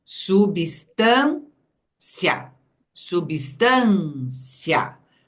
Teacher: o i foi pronunciado junto do a ele virou a semivogal